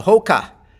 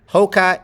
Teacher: the vowel in the second syllable is a schwa. Hoka, you might have aspiration.